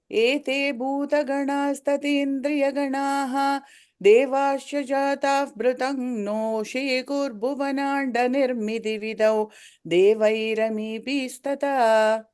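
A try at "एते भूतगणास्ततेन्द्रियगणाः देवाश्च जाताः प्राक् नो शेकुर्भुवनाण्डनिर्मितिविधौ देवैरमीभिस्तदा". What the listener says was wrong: The B, I feel like you're stretching it. Devairami bistada. Short.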